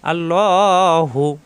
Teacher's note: আল্লাহ শব্দের লামের ডানে জবর এবং পেশ আসলে আল্লাহ শব্দ ল হয়, মোটা হয়। লয় আকার প্রকাশ পাবে না, ল হবে।